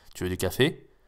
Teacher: Oui, là, c'est une question quand même. Je monte un petit peu la voix, on s'en rend pas trop compte, mais pas suffisamment.